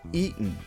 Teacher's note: That special sound you hear is a glottal stop, like when you say, uh-oh